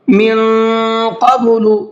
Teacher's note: نون کو جو ہے تھوڑا سا ناک میں آواز روک کر کے پڑھنا ہے، اس لیے کہ نون ساکن کے بعد میں قاف ہے اور قاف اخفا کے حرفوں میں سے ہے۔